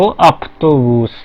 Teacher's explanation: वह देखिए, वह जो गूंजने वाला है, कंपन वाला है सघोष, वो अघोष वाले त से पहले आया है, ठीक है, शब्द में। तो जो व है उसका फ बन गया